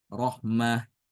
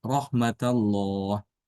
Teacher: melihat yang tertulis dia tetap dibaca seperti tamarbut Rahmah ya ya kalau diwakafkan dia dibaca Rahmah tapi kalau diwasalkan sama seperti Imam hafz dibaca ta rahmatallah hanya bedanya kalau dia wakaf ya pada kata ini Ini